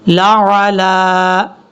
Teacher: کو کلیئر کرنا ہے، پھر لام کے اوپر کھڑا زبر ہے، کھڑا زبر کی وجہ سے لام کو لمبا کریں گے